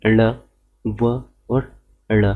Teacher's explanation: जीवा ऊपर उठकर मूर्धा की ओर स्पर्श करती है, ठीक है, अर्थात तुरंत नीचे गिरती है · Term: उच्चिप्त व्यंजन